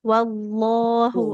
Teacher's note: jangan seperti ada waw sukunnya, tidak wallah, wal langsung ke lamnya